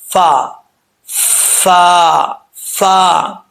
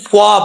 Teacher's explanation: یہ اوپر والا جو دانت ہے، ان دانتوں کا جو نچلا حصہ ہے، نچلا کنارہ، یہ نیچے والے ہونٹ کے تری والے حصے کی جگہ لگے گا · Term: فا کا مخرج